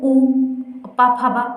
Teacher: ये ओंठ से बोले जाते हैं